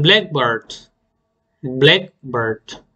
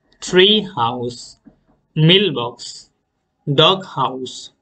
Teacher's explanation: compound নাউনগুলোর first part or first ওয়ার্ডটা আমরা stress করব